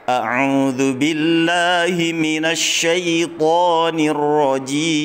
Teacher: Kita pakai nada ros ya. Rendah, kemudian tinggi, rendah, tinggi, rendah, tinggi begitu ya.